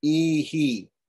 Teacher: You notice that the echo is also as long as the vowel that comes before visarga.